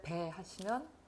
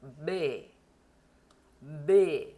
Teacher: 좀 강조하면 배 이렇게 되죠. 독일어의 배는 그 날숨이 거의 느껴지지 않아야 돼요